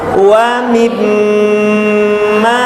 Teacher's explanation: Tahan di rongga hidung 2 ketukan. Coba wa mim, masukkan ke rongga hidung ya, rasakan dia masuk ke rongga hidung. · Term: Gunnah